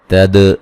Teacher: دال پہ قلقلہ کریں گے